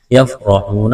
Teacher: را کے اوپر زبر ہے، موٹا کرنا ہے، واو ساکن سے پہلے پیش ہے، واو مدہ ہے، ایک الف کے برابر کھینچنا ہے۔